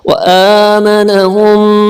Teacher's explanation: میم پہ شد ہو تو وہاں گنا ہوتا ہے, ناک سے آواز نکال کے پڑھا جاتا ہے. من خوف, یہاں خو کو موٹا کر کے خوف.